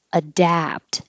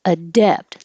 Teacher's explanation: 15 is adapt, and the vowel is like hat, adapt. So you have to open a lot and keep your lips back